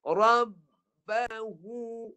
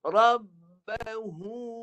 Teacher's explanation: Dan suara huruf ha keluar dekat mulut. Bukan keluar kat khusyum tadi Keluar kat mulut.